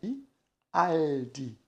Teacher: a ponta da língua toca nos dentes superiores e assim nós conseguimos pronunciar o l